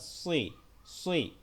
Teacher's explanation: এটা সদ জের সি হবে না, সই হবে। সিন জের সি হয়, কিন্তু সদ জের সই, সই একটু মোটা